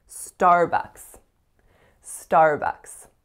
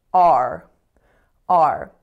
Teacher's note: So the first vowel is R, R. So it's a complex R-colored vowel. And so make sure you're not saying a, it's not R, it's a, R.